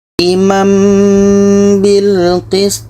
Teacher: Bunyi tanwin sudah nggak ada, kita pindahkan kepada mim. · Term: iklab